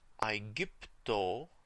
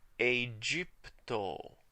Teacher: in restored pronunciation, we pronounced the A as one diphthong, a sound that pronounces both letters at the same time.